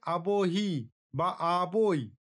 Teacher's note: এখানে আ এবং রস্যই, আ এবং রস্যই এই স্বরের মাঝে ব ধ্বনির আগমন ঘটেছে, যা উচ্চারণকে সহজ করেছে।